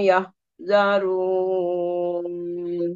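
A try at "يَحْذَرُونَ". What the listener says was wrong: Nah, yahza. Ha yahzarun. Nah, itu masih ke H. Yahza. Nah, PR-nya huruf H tadi ya.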